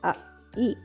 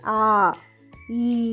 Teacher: ದೀರ್ಘ ಸ್ವರಗಳನ್ನ ಸ್ವಲ್ಪ ಹೆಚ್ಚು ಉಸಿರನ್ನ ಕೊಟ್ಟು ಉಚ್ಚಾರಣೆಯನ್ನ ಮಾಡ್ತೀವಿ. ಆ ಈ ಅಂತ ಹೇಳುವಾಗ ಅಕ್ಷರಗಳಿಗೆ ಸಮಯ ಜಾಸ್ತಿ ತಗೊಳ್ತೀವಿ